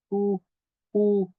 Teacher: al decir U, la lengua está en una posición posterior, va hacia atrás con la punta alejada de la superficie interna de los dientes inferiores, o sea, no lo toca, no está ni siquiera cerca y debe mantenerse hacia atrás para pronunciar correctamente el sonido.